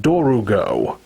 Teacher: See, I ask that because in pretty much every source I've looked up, the official English spelling of the name for this monster is Dorgo. But in the dub, it's pronounced Dorugo. So they add that extra syllable